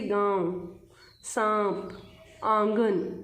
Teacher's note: इनका उच्चारण नाक और गले दोनों से होता है इन्हें अनुनासिक कहते हैं